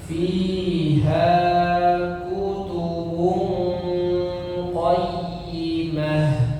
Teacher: Panjang pendeknya fi ha sama ya, dua harakat. Kemudian kutubung itu didengungkan ya samar-samar.